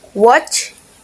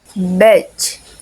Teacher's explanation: Both consonants are post-alveolar affricated, meaning they begin as a stop like the or the and release into a fricative. And they are made with the tongue near the back of the alveolar ridge